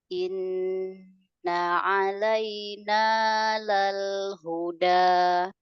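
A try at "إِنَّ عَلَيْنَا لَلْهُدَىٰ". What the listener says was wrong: Ainnya alaina, nya tipis. A-nya suaranya keluar ya. Hanya disentil makrotnya aja kalau huruf ain itu. Dan a, a, nah ini masih suaranya masih tertahan, masih di dalam mulut. A, ringan dia ringan. Tipis. Tapi tidak masuk ke hidung.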